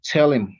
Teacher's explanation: pronouns that start with h usually lose their h sound